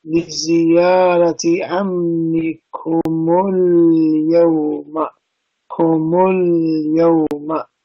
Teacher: changing this sukoon of mim to a dhamma. That way you get a free-flowing word. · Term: sukoon can change to a dhamma